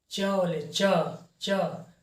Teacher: आपका जीभ जो है ऊपर तालू में सटता होगा, च छ ज, तो इसको तालू से बोलते हैं।